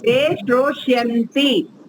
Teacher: जो बीच में सकार आएगा वो तो मूर्धन्य सकार आएगा